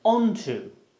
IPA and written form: ˈɒntʊ (onto)